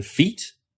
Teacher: E as in feet, with a high front tongue position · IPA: [i]